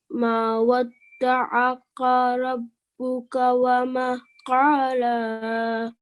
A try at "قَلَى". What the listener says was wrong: So no need to elongate the sound. Yeah, it's just short. قلى. So the qaf had just a fath on it. That's a very short sound. No need to elongate that.